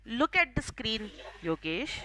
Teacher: I'll take a small pause before taking your name, and along with that, my intonation will go down.